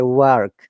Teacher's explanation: Americans will work. They will pronounce the R.